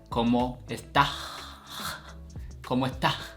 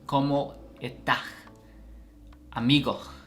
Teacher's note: they drop the S's at the end of the word